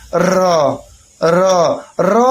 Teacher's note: जब आप बोल रहे हैं बार-बार तो कहीं ना कहीं आपकी जो जिवा है वह दो से तीन बार कंपन कर रही है